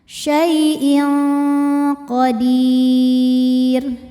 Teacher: Kemudian ada hukum ikhfa hakiki dengan tingkatan dengung ab'ad, ikhfa ab'ad. Sebab ada tanwin kasrah menghadapi huruf qaf, maka tanwinnya dibunyikan samar-samar disertai dengungan. Dengungnya lebih besar ya.